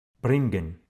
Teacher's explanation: ენი და გ იკითხება როგორც ν. ამ დროს ცხვირისმიერი გ ყრუდ ისმის